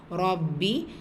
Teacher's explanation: ரப்பி ரா ஃபத்ஹா பெற்று வந்திருக்கு, வல்லை நம்ம ஓதணும். பா ஷத்தா வந்திருக்கு, அழுத்தம் கொடுத்து ஓதணும்.